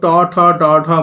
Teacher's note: দেখো ট, ঠ, ড, ঢ মূর্ধন্য যখনই বলছি জিভটা কিন্তু একটু উল্টে গিয়ে মূর্ধাকে অর্থাৎ মাড়ির দিকটাকে স্পর্শ করছে, আমরা মাড়ি বলি ভিতরের দিকটা।